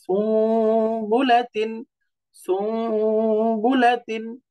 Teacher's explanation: এই দেখেন নুন সাকিন তারপরে বা, নুন সাকিন তারপরে বা, এই জন্য ইখলাব হিসাবে এই নুন সাকিনকে মিম দ্বারা বা মিমের মতো করে পরিবর্তন করে পড়তে হবে